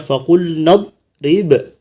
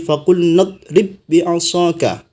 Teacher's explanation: ketika wakaf dipantulkan ba-nya. Tapi ketika disambung, maka ba-nya tidak memantul lagi